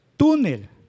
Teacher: La sílaba tónica o la sílaba fuerte es la grave.